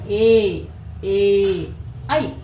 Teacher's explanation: ಕಂಠ ಮತ್ತು ಅಂಗಳದ ಮೂಲಕ ಉತ್ಪತ್ತಿಯಾಗುವುದನ್ನ ನಾವು ಏನಂತ ಹೇಳಿ ಕರೀತೀವಿ ಅಂತಂದ್ರೆ ಕಂಠ ತಾಲವ್ಯ ಅಕ್ಷರಗಳು